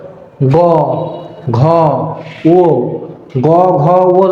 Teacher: যখন বলি তখন আমাদের কন্ঠের ভেতর থেকে ঘর্ষণটা অনেক জোরে হয় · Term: ঘোষ